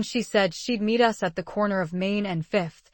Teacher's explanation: the stressed words are said, meet, corner, Main, Fifth. Those words carry the action, the place, and the specific details. · The speaker emphasizes the key words by making them longer, louder, and higher in pitch. For example, in she said she'd meet us at the corner of Main and 5th, the stressed words are said, meet, corner, Main, 5th. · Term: stress patterns